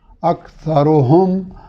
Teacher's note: ہا کو اس کے مخرج سے، حلق کے نچلے حصے سے، میم کو ساکن ادا کریں گے